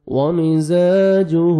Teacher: زا کو زور سے پڑھیں گے الف مدہ 1 سیکنڈ زا کو کھینچنا ہے